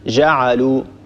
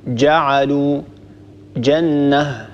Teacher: أول هذه الأخطاء كما ذكرت لكم منذ قليل هو أن ننطق الجيم رخوة، ننطق الجيم كالجيم في العامية، يعني نقول مثلا جعلوا، ونقول مثلا وجنة، لا، الصواب أن نقول جعلوا جنة، هكذا ننطق الجيم شديدة لأن الجيم من حروف الشدة ينحبس الصوت عند النطق بها